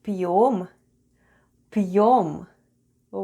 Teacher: Soft Sign makes the proceeding letter sound soft so we have /p'/ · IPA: /p'yom/